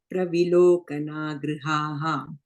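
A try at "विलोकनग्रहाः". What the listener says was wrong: And again, again you're saying Grihaha, you're saying third line. Grahaha. Grahaha.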